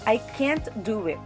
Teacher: the emphasis is on can't therefore the person do not have the ability to do it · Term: sentence stress